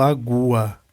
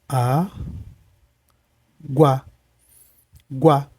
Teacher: isso aqui é um som só tá então o u e o a ficam juntos então essa palavra é um de tongo perfeito para finalizar gente